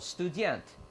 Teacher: You just have the accent on the second syllable.